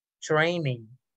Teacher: Siempre que usted vea estas dos letras juntas, ¿no? T-R, eso es una Ch-R. No decimos training, tre, sino que ch.